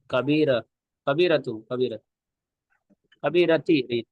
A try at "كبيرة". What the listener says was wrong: تو کبیرتو کیوں پڑھ رہے تھے آپ؟ یہ بھی 50 دفعہ بات آ گئی ہے کہ بھائی حرف جر فی من الا جس پر بھی داخل ہو اس کے لاسٹ میں زیر آئے گا.